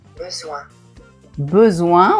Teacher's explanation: D'abord on dit o et après on dit un. Ça fait besoin.